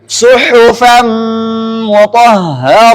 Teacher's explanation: Nun pertama punya dengung, nun kedua punya dengung. Nun pertama ketika masuk ke mim, nunnya ada dengungnya, mimnya juga ada dengungnya. Maka enggak bisa dihilangkan yang dengungnya ini.